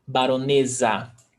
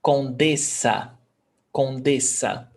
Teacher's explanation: one S between vowels, it's pronounced Z. Baronesa, with a Z sound.